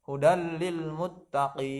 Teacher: Panjangnya ini boleh 2 alif 4 harokat, paling sempurna 3 alif 6 harokat kan. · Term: mad arid disukun